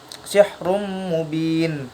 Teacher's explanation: Jadi bacaan nunnya tidak terlihat tapi masuk ke huruf mim. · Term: idgham bi gunnah